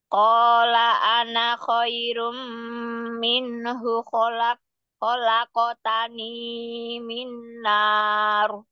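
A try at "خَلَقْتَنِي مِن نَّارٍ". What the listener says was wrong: Kholaqotani ininya jangan kepanjangan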